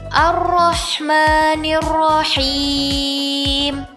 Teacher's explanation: terdapat tasdid yang harus dijaga serta huruf ha yang makhrajnya ada di tengah tenggorokan. Jadi bacanya teliti ya, jangan sampai tasydidnya tidak dibaca karena khawatir akan berubah maknanya.